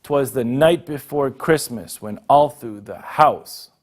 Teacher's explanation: we've got an anapest here, unstressed, unstressed, and stressed